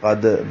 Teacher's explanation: دال اور تا، ان دونوں کا ایک ہی مخرج ہے